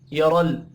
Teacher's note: यरल रा को ज़बर की वजह से पुर पढ़ेंगे।